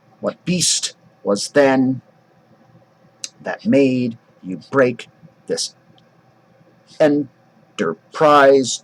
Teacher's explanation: So that's unstressed, stressed, unstressed, stressed, unstressed, stressed, unstressed, stressed, unstressed, stressed. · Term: stressed position